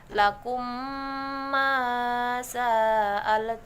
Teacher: mim mati bertemu dengan mim dibaca dengan berdengung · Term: idgham mimi